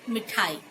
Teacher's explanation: म में जो हम मात्रा का उच्चारण कर रहे हैं वो हम बहुत जल्दी कर रहे हैं, देर तक नहीं कर रहे हैं। यानी हम ह्रस्व स्वर का प्रयोग कर रहे हैं, दीर्घ स्वर का प्रयोग नहीं कर रहे हैं।